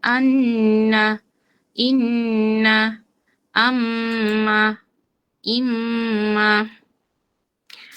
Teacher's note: স্থানটা হচ্ছে নাকের বাঁশি, আর অক্ষরগুলো তো অক্ষরগুলোর জায়গা থেকেই উচ্চারিত হবে। আর গুন্নাটা হবে নাকের মধ্য থেকে